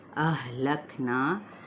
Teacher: اقصی حلق سے یعنی سینے کے قریب والے حصے سے۔ نا پہ الف مدہ، نون پہ اخفا، پر اخفا ہوگا کیونکہ آگے قاف ہے۔